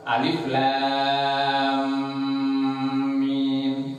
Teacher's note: suaranya mim yang pertama dimasukkan ke dalam suaranya mim yang kedua